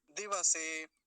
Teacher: अगला शब्द देखिए दिवसे, दिवसे नहीं बोलेंगे, वकार आधा नहीं होना चाहिए, पूरा ही रहना चाहिए, नहीं तो यहाँ भी गलत उच्चारण हो जाता है, दिवसे कह देते हैं।